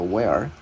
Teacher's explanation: mình cong lưỡi chữ R vào là where